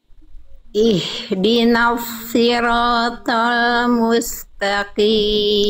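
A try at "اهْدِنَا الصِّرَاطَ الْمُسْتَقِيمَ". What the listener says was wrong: Sedikit lagi belum maksimal. Nah, pangkal lidahnya semaksimal itu lagi.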